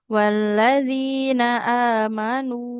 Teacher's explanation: Mau berhenti, mau lanjut nunnya tetap panjang